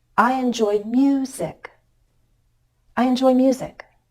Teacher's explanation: I have to go up a little in order to come down · I'm making this key change in pitch on the word music because that's my focus word